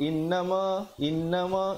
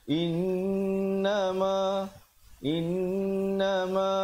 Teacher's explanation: In, dengungkan di situ 2 harakat wajibul gunnah.